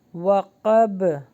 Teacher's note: Next ہے واو پر ہوٹو کو گول کیجیے، میں دوبارہ اخفا ہوگا، میں شر ری غا، یہاں پہ غائن کا مخرج لگائیے، غا، یہاں پہ الف مدہ ہے تو تھوڑا سا لانگ کیجیے، غا سی قن ای ذا و قب، با پہ سٹاپ ہو رہا ہے تو یہاں پہ باؤنس بیک ہوگا، قلقلہ ہوگا، وقب۔ نیکسٹ ہے میں پھر اخفا ہوگا، میں شر رن، را کو نون سے ملائیں گے اور یہاں پہ غنہ ہوگا، رن، نون کو فا سے ملائیے، نف، کھڑی حرکات آ رہی ہیں تو اس کو تھوڑا تھوڑا لانگ کیجیے، نفثتی فل عقد، عقد، دال پہ بھی قلقلہ ہوگا۔